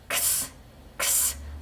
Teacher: 그래서 유지되지 않고 크스 자 목을 짚어보시면 크스 크스 성대는 울리지 않고 새는 바람만 새어나오는 유지되지 않는 새는 소리 X입니다.